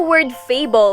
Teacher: the first syllable has the stress because it is said louder longer and with a higher pitch compared to the second syllable